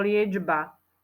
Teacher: čo si tam počul Počul si tam č alebo dž liečba No ja tam počujem dž ale nepíšeme tam dž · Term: spodobovanie